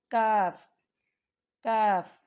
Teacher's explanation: زبان کی جڑ اور تالو کے سخت حصے سے کاف ادا ہوتا ہے